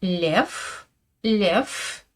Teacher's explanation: Par exemple, si je prends le mot lev, lev, vous entendez bien un f à la fin, n'est-ce pas? Mais je l'écris avec un v que je prononce comme un f. Lev, lev. Ma consonne finale est dure, n'est-ce pas?